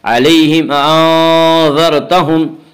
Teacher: علیہم انذرتہم، اس کا قاعدہ یہ ہے کہ میم ساکن کے بعد اگر میم اور با کے علاوہ کوئی اور حرف آئے تو وہاں پہ اظہار شفوی ہوگا، اظہار شفوی یعنی میم کو ظاہر کر کے پڑھیں گے